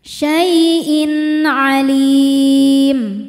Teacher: Syai'in in ada hukum izhar halqi karena ada tanwin kasrah menghadapi huruf halqi atau huruf tenggorokan yaitu ain. Maka tanwin dibaca dengan jelas.